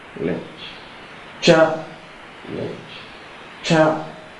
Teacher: So you see that the stress falls on the first syllable. It's higher.